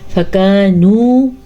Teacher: فَكَانُوا كَهَشِيمِ كَهَشِيمِ کاف کو باریک پڑھنا ہے۔ فَكَانُوا میں بھی کاف باریک ہے لیکن واو مدہ بھی ہے، فَكَانُوا نہیں پڑھنا آپ نے کہ فَكَانُوا غلط، فَكَانُوا درست۔